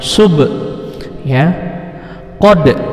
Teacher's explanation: Kalau huruf ba, da, ja itu pantulannya ke e. Jadi sub kayak e, ya. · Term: qalqalah sugro